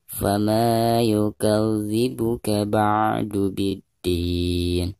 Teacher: Fama dipanjangkan 2 harokat. Karena ada harkat fathah ma lalu berhadapan dengan mad tabi'i alif ya